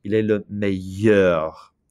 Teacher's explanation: Notice I do not say an L sound, it's a Y sound.